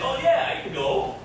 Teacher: The vowel in can is short and unclear, right? So you just smash it down.